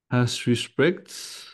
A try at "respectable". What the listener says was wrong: Il y a une petite syllabe après respect. Pas exactement respect.